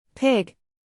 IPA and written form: pɪɡ (pig)